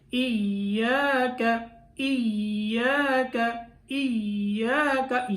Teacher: یا کے اوپر تھوڑی دیر لگانی ہے کیونکہ یہ مشدد حرف ہے، تو مشدد حرف کے اوپر دو حرفوں کی دیر لگتی ہے۔